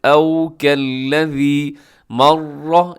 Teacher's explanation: را کی پر تشدید ہے، را کی پر زبر کی وجہ سے موٹا بھی پڑھا جائے گا